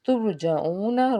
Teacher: ترجعون، را ساکن سے پیچھے پیش، تو یہاں پہ ہم نے اس کو پر پڑھنا ہے، اور آگے عین ہے، حرف ہلکی کا حرف، حلق کے درمیان سے اس کو ادا کرنا ہے، واو ساکن سے پیچھے پیش ہونے کی وجہ سے ایک الف کے برابر کھینچ کے ادا کریں گے۔